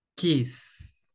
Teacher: Solamente suena, ¿verdad? El aire como que pasa de un solo, ¿verdad? No hay como una vibración, algo carrasposito, nada, ¿verdad? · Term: letra muda